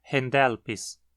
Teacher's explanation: a penúltima sílaba é pesada então o acento cai nela